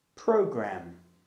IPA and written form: 'prəʊgræm (program)